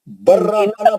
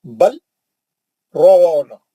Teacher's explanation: اگر جی، ملا کے پڑھیں گے تو لام نہیں پڑھا جائے گا. لام ساکن ہے، را متحرک ہے. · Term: لام گر جائے گا